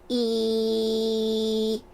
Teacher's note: Especially towards the back and the top of the back of my tongue E is almost completely touching the roof of my mouth there. Um, and then after the part where your tongue touches the roof of your mouth, there's still an open pocket for your voice to kind of resonate in the front of your uh face.